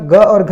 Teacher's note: ग और घ आ जाएगा कंठ में